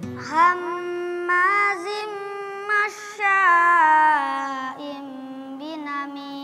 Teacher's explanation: huruf shin dia dari tengah-tengah lidah. Jadi anginnya keluar dari semua lubang-lubang antara gigi itu semua keluar. Kalau itu cuma dari bagian depan saja.